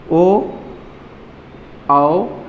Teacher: जैसे ही ओ उच्चारण किया तो तुरंत आपके होठ फिर गोलाकार हो गए